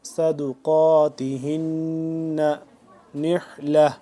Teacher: صا کو موٹا کر کے پڑھیں گے، قاف کو موٹا کر کے پڑھیں گے ، ہن نون مشدد کے اوپر غنہ کریں گے، صدقاتہن نحلہ،